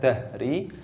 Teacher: Kita masukkan, kita idghamkan minad dahri, haknya berharokat sukun, dibaca dahri. Hak itu keluar dari tenggorokan paling bawah, makanya termasuk huruf halq, huruf yang keluar dari tenggorokan.